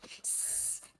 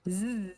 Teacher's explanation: when you make the S noise your vocal folds are not vibrating air is passing through but when you make the Z noise your vocal folds are vibrating and you can could feel it if you place your hand